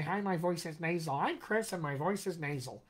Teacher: i've actually taken this soft palate and i've pressed it down to send more air out and through the nose as opposed to through the mouth so you actually have the ability to press your soft palate